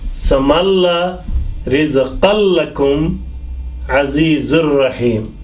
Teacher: this is the example where we join with ra, lam, with tanween or nun sakin without passing the sound through nose